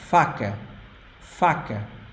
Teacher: the first a is strong open ah and the last one is soft